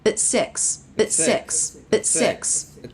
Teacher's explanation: This is the word at reduced with the stop t. And you see this section here where there's the stop of air.